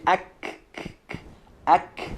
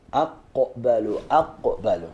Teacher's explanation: Letter kaf is more forward towards our lips. Of course, we use some part of soft palate and also hard palate for letter kaf.